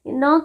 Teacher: न का उच्चारण स्थान दंत प्लस नासिका होता है।